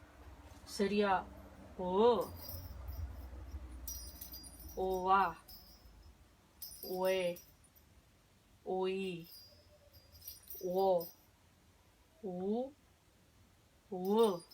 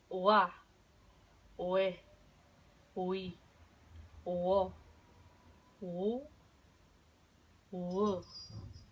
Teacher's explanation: la W o la U se pronuncia como una G muy arrastrada